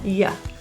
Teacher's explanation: The word you gets reduced to y, a really neutral vowel, y.